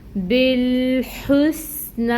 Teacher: سین ساکن ہے، اس کی صفت کو واضح کریں گے جو سفیر ہے یعنی سٹی، اور پھر نون کے اوپر کھڑی مد 2 کاؤنٹس کے برابر لمبا کریں گے نا کو۔